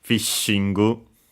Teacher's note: The only notable thing is the doubling of the consonant, unlike in English, of course, of the she, fishingu. Also notice that actually we had technically a gu, because yeah, not only following technically how it's written in English, but also because the n on its own wouldn't have the sound ng, the famous ng from English.